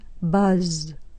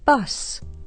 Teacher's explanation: you should feel a vibration on the z sound this is a voiced sound · you shouldn't feel a vibration on that last s because the sound is unvoiced